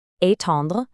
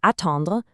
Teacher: The difference is all in the beginning. Étendre starts with a tense, closed A sound, but attendre starts with a really relaxed, open ah sound. A tense start versus a relaxed start.